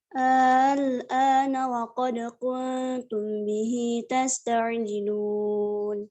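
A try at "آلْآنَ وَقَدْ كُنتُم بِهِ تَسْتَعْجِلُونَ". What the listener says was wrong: Nah, jangan ada madnya, jangan gini bacanya. Bukan gitu. Jangan gitu ya. Jadi A yang pertamanya nggak ada mad di situ. Al-ana wa qad al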